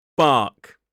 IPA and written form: bɑːk (bark)